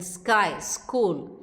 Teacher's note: unaspirated when it is preceded by S